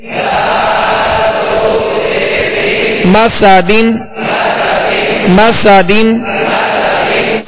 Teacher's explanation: سین کو سختی کے ساتھ اس میں سیٹی کی آواز پیدا ہوگی اور دونوں زبر جو میم اور سین پر اس کی ادائیگی کے وقت آواز اور منہ دونوں کھولیں گے.